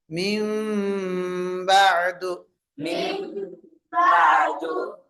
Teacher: வேண்டும் குன்னா செய்து பாருங்க மிம்பது உதடை ஒட்டணும் [இசை] ரொம்ப அழுத்தம் கொடுக்கக்கூடாது கீழ் உதட்டுக்கு மேல மேல் உதட்ட வைக்கணும் அவ்வளவுதான்